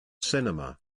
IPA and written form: ˈsɪn.ə.mə (Cinema)